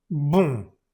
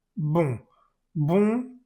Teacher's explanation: se pronuncia con la boca muy cerrada, mucho más cerrada que en español. Entonces esto se dice boom.